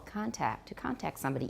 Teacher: note that the stress stays on the first syllable, contact, to contact somebody, even though it's a verb